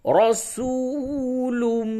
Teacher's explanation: چلیے را زبر را، سین واو پیش سو، رسو، لام میم دو پیش لم، رسولم، تنوین کے بعد میم آیا، اس جگہ پہ ادغام مع الغنہ ہوگا